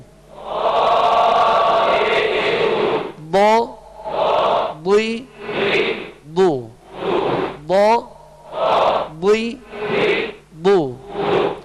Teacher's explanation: ان حروف میں سے یہ ضاد بھی ہے، لہذا ضاد کو پر پڑھیں گے اور زبر زیر میں ہونٹ گول نہیں ہوں گے